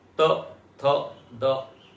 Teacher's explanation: इसको बोलने के लिए आपको जीभ को दांत में टकराना पड़ेगा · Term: दंत वर्ण